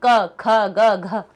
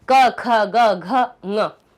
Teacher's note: मुंह में कहीं पे हमारी वायु नहीं टकराई, सीधी कंठ से बाहर निकली, इनको कंठव्य कह देते हैं।